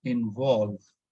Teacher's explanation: We are not stressing on IN, we are stressing on VOLVE.